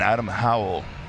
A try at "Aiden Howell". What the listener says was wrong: Aiden? Or Adam? You said Aiden.